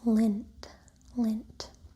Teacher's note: the I in the sound lint gets some nasality from the upcoming nasal sound